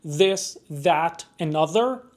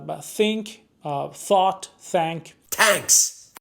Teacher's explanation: talk about th sounds uh called uh interdental fricatives uh and they are produced by placing the tip of the tongue between the upper and lower teeth